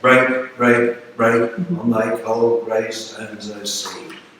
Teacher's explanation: We would call it a spondaic line. It's all long stressed syllables rather than a tripping measure. It's got a solid measure to it.